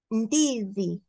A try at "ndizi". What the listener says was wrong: Yes.